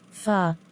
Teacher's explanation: pronounced in the back part of the vocal tract with the tongue completely open and low in the mouth